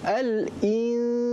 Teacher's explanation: Dia ikhfa hakiki ni dia kena ikhfa dan dia dengung.